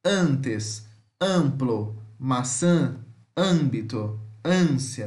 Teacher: E temos o nasal, né, que é o an, que ele é semiaberto, central, nasal, não arredondado